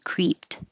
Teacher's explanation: the e d sounds like a t